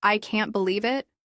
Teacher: For example, if you say, "I can't believe it." with a rising tone at the end, it sounds like you're surprised